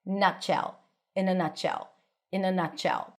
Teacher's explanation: T is held connected to the sh sound.